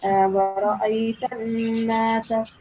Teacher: Just prolong the noon sound for 2 seconds. You have to produce a nasal sound with that. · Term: noon mushaddad